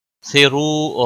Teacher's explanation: را کے اوپر پیش ہے، پر پڑا جائے گا. رو واو مدہ ہے، ایک الف کے برابر کھینچ کر پڑھیں گے.